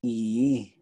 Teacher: the tone changes a little bit just because you're pulling your lips back but you're not actually adding another vowel